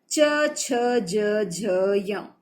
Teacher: च, छ, ज, झ, य, इसे हम कहते हैं तालु। च, ये तालु पे टच होता है इसलिए इसको तालु कहते हैं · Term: तालव्य